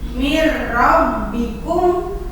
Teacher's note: Terus ada lagi yang nun mati menghadapi ro, mir rabbikum. Nah, jadi nunnya dimasukkan ke huruf ro. Mir rabbikum, kan nulisnya mah min rabbikum, tapi dibacanya jadi mir rabbikum. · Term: idgham bila gunnah